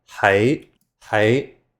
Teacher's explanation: The second word is rising tone